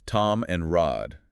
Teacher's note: the I sound in words like time and ride often gets pronounced more like an ah sound